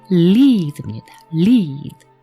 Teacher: 혀 끝이 입 천정에 붙어 있죠. 그 발음이 리을 발음과 L 발음이 유사하고요.